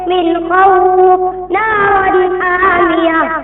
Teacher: نون ساکن یا تنوین جلد پڑھا جائے گا نہ کھینچا جائے گا نہ غنہ ہوگا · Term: اظہار حقیقی